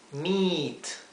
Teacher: sepan que se pronuncia como una I larga del español